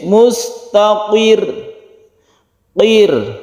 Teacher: qaf itu kan tebal, hurufnya itu huruf isti'la ya, huruf tebal, akan tetapi kemudian bertemu dengan roh yang tipis